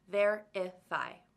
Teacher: Verify has 3 syllables, verify. And the first syllable is the loudest one, verify. But when we turn it into a noun, there are now 5 syllables, verification.